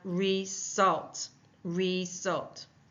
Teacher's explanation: that's putting the emphasis on the second syllable